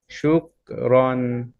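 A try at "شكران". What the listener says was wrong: কাফের হামসটা ঠিক করেন, শুক, এই যে শুকরান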